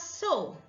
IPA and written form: səʊ (sow)